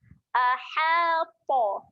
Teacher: Okay, seterusnya aha. Jaga makhraj huruf ha. Ha tekan di tengah kerongkong.